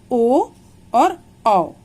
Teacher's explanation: ओ और औ बोलते समय कंठ और ओष्ठ दोनों की आवश्यकता पड़ती है, तो ये उच्चारण स्थान हुआ कंठ और ओष्ठ। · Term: कंठोष्ठ्य